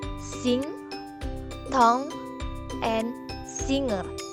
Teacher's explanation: the passage is completely blocked by raising the back of the tongue to touch the soft palate. The soft palate is lowered so that the air can pass through the nose. There is vibration in the vocal cords.